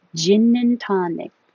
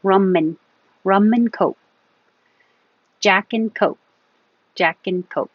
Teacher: We just make the and an in noise. So it will really sound like ginin.